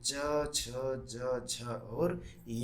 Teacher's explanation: च छ ज झ और य जो है वो तालव्य व्यंजन के अंतर्गत आते हैं